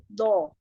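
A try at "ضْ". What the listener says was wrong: Jangan monyong. Jangan monyongkan bibir. Bo, atau dibuka. Bo. Dia lagi sukun ya. Belajarnya lebih ini sih kalau kita belajar makhraj itu disukunkan. Jadi jadi istilah itu tak panjang. Ya ditekan nih.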